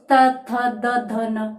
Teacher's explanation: ठीक है, कंठ और कंठ के बाद तालु, तालु के बाद अपन मूर्धा पर पहुंचे थे, मसूड़ों पर पहुंचे थे, मसूड़ों से अपन दांतों तक आ गए थे। दांतों में आप देख लीजिए बोलकर त थ द ध न, यानी जीभ दांतों से टकरा रही है